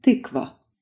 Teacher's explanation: A vowel with relaxed lips and a tongue position in between u and e.